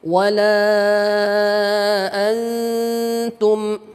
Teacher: Ya, hukum nun mati dengan huruf ta, dia dekat. Nun ujung lidah dengan ta, ujung lidah pangkal gigi seri atas, sehingga tingkat samarnya tinggi. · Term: ikhfa aqrab